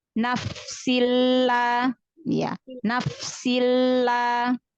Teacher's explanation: Jangan terlalu lama menahan lam sukun pada lam tasydid, karena lam tasydid memang ada 2 ya. Jadi huruf lamnya ada 2, melambangkan konsonan ganda tasydid.